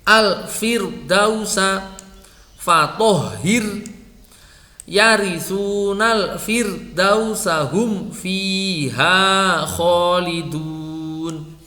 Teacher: Ra sukun setelah kasroh dibaca tipis.